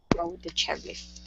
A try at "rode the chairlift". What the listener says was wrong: Give me that D a little bit more. Rode the chairlift.